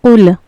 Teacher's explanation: इसमें हमें ख्याल रखना है क़ौफ़ हर हाल में पुर पढ़ा जाता है। ये हुरूफ़ मुस्तालिया के उन 7 हुर्फ़ों में से है जो हर हाल में पुर पढ़े जाएंगे।